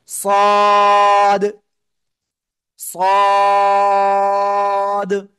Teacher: জিহ্বার আগা, সামনের নিচের দুই দাঁতের পেটও আগার সাথে লাগবে, লাগিয়ে মোটা আওয়াজে পড়তে হবে